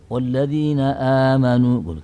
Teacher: Jadi asalnya itu amanu. Hamzah sukunnya itu dibuang, diganti dengan huruf panjang sehingga menjadi amanu. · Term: mat badal